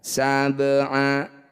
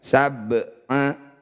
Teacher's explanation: Qalqalah artinya memantul, sugro itu kecil. Bunyi ba pantulkan tapi kecil saja. Pantulannya mengalir, jangan berlebihan. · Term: qalqalah sugro